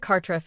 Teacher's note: The emphasis is on the first syllable. The R in both syllables is slightly rolled.